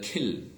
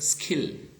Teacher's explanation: Top can be aspirated, but stop is not aspirated, okay. Likewise, kill could be aspirated, okay, but the word skill is not aspirated